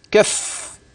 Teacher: لاحظت حينما وقفت كف الفاء مشدده